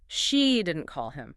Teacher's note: Stress on she. She didn't call him. Meaning someone else called him, but it wasn't her.